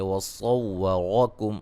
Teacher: صاد کو موٹا، را کو موٹا، میم ساکن کا اظہار ہے